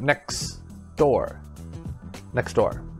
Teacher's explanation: so we drop the t sound